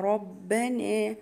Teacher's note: الراء الراء مفخمة لأن هي مفتوحة